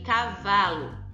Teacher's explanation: essa chamada de paroxítona Ok porque a penúltima sílaba é a sílaba mais forte